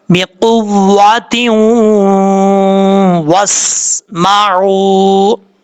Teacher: اور اگر وقف نہیں کرنا چاہتے، یہاں ملا کے پڑھنا چاہتے ہیں، تو تا کو واو سے کنیکٹ کریں گے تو غنہ ہوگا ایک الف کی مقدار